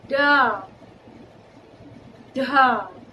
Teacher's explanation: ड और ढ का जब हम उच्चारण करते हैं तो जीभ आराम से छूती है।